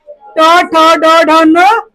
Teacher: ट ठ ड ढ न मूर्धा से होता है।